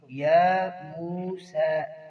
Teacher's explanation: یا موسیٰ ایک ایک الف کے برابر کھینچیں گے، یا کو بھی اور سین کو بھی